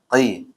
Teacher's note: yang qaf tidak ada anginnya ya